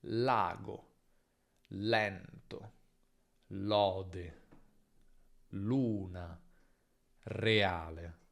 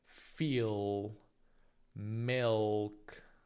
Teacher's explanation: In italiano la L è sempre chiara, non è mai l velarizzata